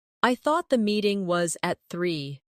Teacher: the soft connection between meeting and was